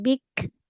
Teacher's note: pada kaf tahan dan lepaskan angin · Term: Syidah dan hams